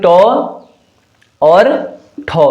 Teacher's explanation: अगर मैं अघोष की बात करता हूं तो अघोष वर्ण में जो है आपके टो और ठो, ये दोनों आते हैं।